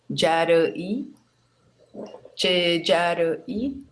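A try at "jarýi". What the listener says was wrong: Tem que só tomar um cuidado que esse avó, o acento não é no I, é no I, no Y, né? Então ele fica Jaraí. um I meio rápido, assim, sem acento.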